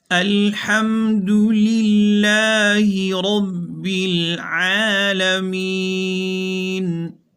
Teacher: الحمد پیش معروف پڑھیں گے، دونوں ہونٹوں کو گول کر کے، للہ زیر معروف پڑھیں گے، را کے اوپر زبر ہے تو پر پڑھی جائے گی، العالمین وسط حلق سے ادا کیا جائے گا تاکہ معنی میں غلطی نہ آئے۔